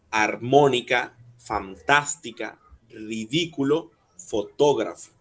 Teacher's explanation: son palabras que llevan el acento de la antepenúltima sílaba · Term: esdrújulas